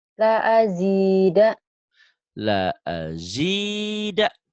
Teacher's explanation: Yang panjang cuma zi doang.